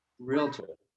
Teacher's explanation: I like to get a little bit of T in it, but you don't want it to be 3 syllables. You want it to be 2 syllables.